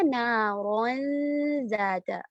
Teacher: اس میں زبان کی چھوٹی سی ٹپ باہر آ رہی ہے، لیکن ہم اس پر پریشر نہیں دے رہے، ہم صرف دانتوں کو ٹچ کر رہے ہیں